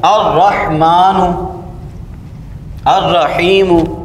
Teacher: لام کو آپ حرف شمسی میں مدغم کر دیں گے، یعنی تلفظ کے وقت لام کے بجائے حرف شمسی ہی کا تلفظ کریں گے، لام کا تلفظ نہیں کریں گے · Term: ادغام